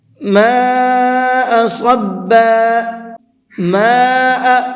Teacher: ماء یہ یہاں پر بڑا مد ہے، اس کو 4 سے 5 الف کے برابر کھینچنا ہے